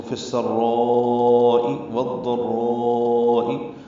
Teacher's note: را میں مد متصل ہے، الف مدہ کے بعد حمزہ آنے کی وجہ سے مد متصل ہے. ہم اس کو 4 حرکات سے زیادہ لمبا کرتے ہیں